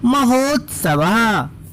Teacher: आ का उच्चारण के बाद तुरंत उ का उच्चारण हो रहा है, तो आ और उ मिलाने पर बच्चों ओ की मात्रा बन जाती है